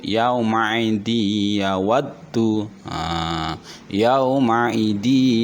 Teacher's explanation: karena tanwin ketemu huruf ya, suara n-nya hilang menjadi huruf ya, baca kasroh, di panjang. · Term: bi gunnah